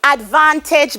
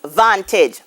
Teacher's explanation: what happens here is that the first syllable is removed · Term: loss of initial unstressed syllable